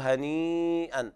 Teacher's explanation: مد واجب متصل، قرأ حفص بالتوسط أربع حركات وبفويق التوسط خمس حركات